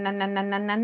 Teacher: la punta de tu de tu lengua, que se conoce como el nombre de ápice, llega a la parte superior, detrás de los dientes, ¿no? De los incisivos.